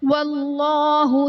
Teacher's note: واللہ میں اسم جلالت اللہ عز و جل کے لام سے پہلے حرف پر زبر ہے تو یہاں پر اسم جلالت اللہ عز و جل کے لام کو پر یعنی موٹا پڑھیں گے